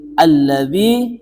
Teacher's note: maka di sini bacaannya harus dengan idgham. Idgham syamsiyah. Harus memasukkan huruf yang bertasdid.